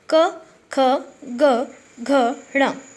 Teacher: ठीक है, हर पंक्ति के पहले अक्षर से वर्ग निर्धारित किया गया है, जैसे क वर्ग। क वर्ग, इसका उच्चारण जो है वो कंठ की सहायता से होता है, मतलब गले की सहायता से होता है। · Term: कंठस्थ व्यंजन